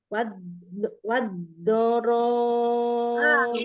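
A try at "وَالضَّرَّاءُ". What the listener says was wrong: Itu malah ro-nya nggak tasdid. Dua-duanya tasdid.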